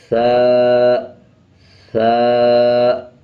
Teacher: زبان کی نوک دونوں دانتوں کے درمیان رکھیں گے، تب ثا ادا ہوگا۔ ثا آپ بار بار اس کی پریکٹس کریں، زبان کی نوک دانتوں کے درمیان لے کے آئیں گے۔